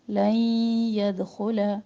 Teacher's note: لن نون ساکن کے بعد یا ادغام کر رہے ہیں، یہاں پر ادغام مع الغنہ